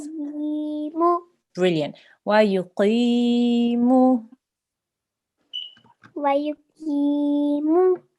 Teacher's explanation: Ya mad means that you need to elongate this sound that comes before because there is a qasra underneath this qaf.